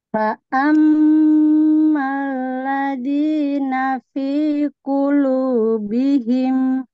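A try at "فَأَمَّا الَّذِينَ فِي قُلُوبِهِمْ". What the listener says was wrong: Nah, ini pengucapan the, ujung lidah, ujung gigi atas. The. Ya, jangan sampai di, tapi the.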